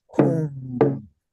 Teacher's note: So you send it right up straight up your nose, very nasal sound. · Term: nasal vowel